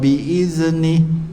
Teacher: Jadi huruf zal ni sifat dia nipis, sifat dia lembut, hujung lidah duduk di hujung gigi atas.